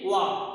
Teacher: दंतोष्ठ मतलब दांत और ओंठ दोनों को मिला के बोलने जाने वाला व्यंजन। तो दोनों को मिला के बोले जाने वाला व्यंजन वाह है।